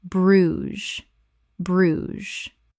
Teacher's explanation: One syllable in natural English. The ges makes a z sound.